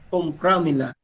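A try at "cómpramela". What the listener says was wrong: Iba yung asento nasa o. Compramela. Compram. Kasi sinasabi mo compraamela na sa praamela.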